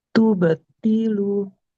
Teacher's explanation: huruf to-nya hati-hati jangan seperti ta ya, tidak ti. Nggak boleh mengalirkan nafas.